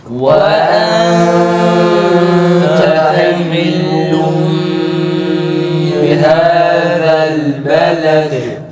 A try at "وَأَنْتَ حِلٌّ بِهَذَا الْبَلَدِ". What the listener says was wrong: O ihfayı fazla uzatmayalım. Fazla uzatınca bu sefer ses dengeleri bozuluyor.